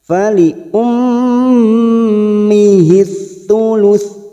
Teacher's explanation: mim yang bertasdid ghunah musadadah kita dengungkan selama tiga harakat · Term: gunnah musaddadah